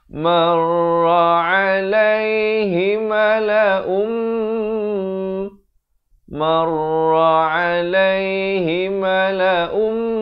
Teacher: Di sini hukum idgham bi gunnah, asalnya mala'un, datang mim jadi mala'um, terus masuk beserta dengung, kadar panjang dua harakat.